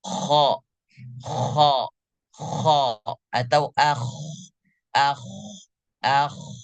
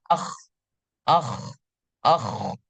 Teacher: kita rasakan bahwa huruf ko itu benar-benar keluar daripada ujung tenggorokan sendiri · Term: huruf kho